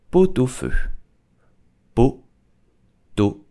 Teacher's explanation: you need to make a link between the T and the a